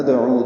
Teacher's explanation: یہ نکن یہ کن میں غنہ ہو رہا ہے. ندعو دال ساکن پہ قلقلہ ہے اور عین کو 2 حرکات لمبا کر رہے ہیں وسط حلق سے ادا کرتے ہوئے